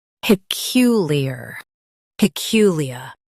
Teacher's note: pe cu li ar peculiar pe cu li ar peculiar Stress cu and keep li light. Ar is soft.